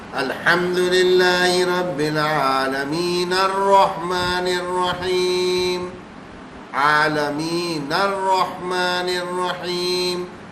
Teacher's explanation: ایک تو وقف بھی نہیں ہوا اور نون ساکن بھی نہیں ہوا، اس کی حرکت پڑھی گئی